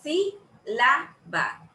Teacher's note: Lleva la mayor entonación ahí donde yo digo sí. Yo no digo sibala, ni digo sibalá. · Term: esdrújulas